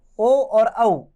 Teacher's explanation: ओ और औ, ये कंठ और ओष्ठ से बोले जाते हैं, इन्हें इसलिए कंठोष्ठ वर्ण कहते हैं।